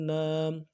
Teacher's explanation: الف مدہ ایک الف مدار میں کھینچیں گے